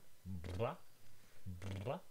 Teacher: Lips have contact rapidly. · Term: bilabial one